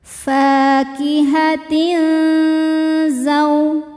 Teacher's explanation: tanwin disamarkan menuju zai disertai bunyi dengung. Samar dan dengungannya sama besar. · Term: ikhfa awsat